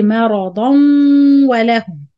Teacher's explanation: So waslan tanween and waw, it will be idgham with ghunna.